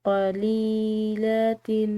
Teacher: لام کے بعد یا ساکن آ رہی ہے تو ایک الف کے برابر اس کو کھنچاؤ دیں گے